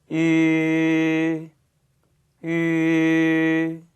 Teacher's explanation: 입 모양을 끝까지 변화시키지 않고 그대로 동그랗게 유지하시는 것이 이 발음의 가장 관건이었습니다. 그러니까 우 한 상태에서 발음을 이의 소리를 내시는 거죠. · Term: 위 발음